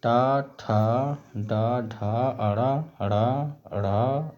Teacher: तालव कठोर तालु से, चा, छा, झा, इया, या, स। मूर्धन कठोर तालु के अगले भाग से